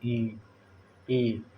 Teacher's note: हवा जाती है तालू पे टकरा के आती है, तालव्य हुआ ई और ई।